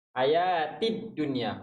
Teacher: Bila nun mati bertemu ya dalam satu kalimah. Dia tak ada dengung dekat sini Dia tak ada dengung. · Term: izhar mutlak